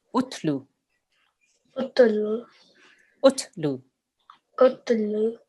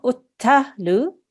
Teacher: Utlu. Okay, so we don't want to jerk on the ta. It's very soft.